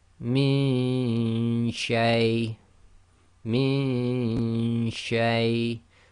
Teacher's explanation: you've got to do the Ghunna and effectively the Ghunna of the Noon in your nose, but you cannot have the tongue in the articulation place of the Noon Sakin. It must already be in the correct place to be ready to say the sheen. · So this would be min shay, min shay. So you don't get a clear Noon sound because your tongue is not going to the articulation point